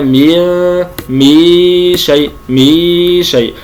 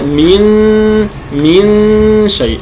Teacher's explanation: وكما نعلم أن الغنة تخرج من الخيشوم، فإخراجها من الفم هو خطأ، كان أقول مي شيء. في الواقع أنا أخفي النون ولكن أخرج غنتها من الفم، فيتولد بسبب ذلك حرف سواء واو أو ياء، وهذا خطأ. مي شيء، وإنما من شيء.